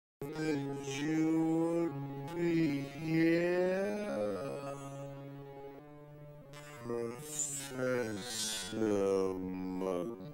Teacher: you can hear a little bit of D sound and also a little bit of ja sound.